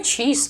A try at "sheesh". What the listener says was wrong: You just said she's. You said she's. It is sheesh. S-H-E-E-S-H. Sheesh.